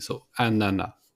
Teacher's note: The pineapple, it's ananas. So we don't pronounce the S at the end, it's simply anana, like banana, but without the B at the beginning.